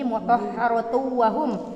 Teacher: Baik, idgham bigunnah. Cara bacanya bagaimana? melebur dan mendengung. Melebur dan mendengung.